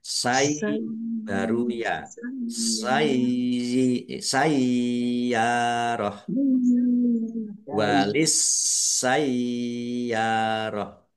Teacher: Sinnya dibaca double. Kemudian ya-nya ada tasdidnya, dibaca sai dulu. Sai baru ya.